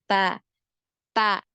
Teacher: Jadi awal punggung ujung lidah pada posisi pangkal dua gigi seri atas.